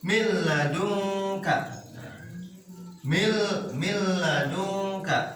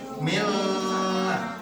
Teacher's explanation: Nun matinya masukkan ke lam dengan ditekan.